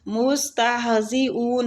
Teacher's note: نحن مستہزئون، مستہزئون، سین باریک پڑھیں گے، تہ کے آگے جو ہا ہے، یہ ہا سینے والی سائڈ سے نکلے گا، وسط الحلق سے نہیں نکلے گا۔ اون، ادھر مد عارضی سکون ہو رہا ہے۔